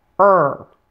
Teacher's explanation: your tongue is floating in the middle of your mouth and it does not touch the roof of your mouth Earl your mouth and tongue are tense when you're pronouncing this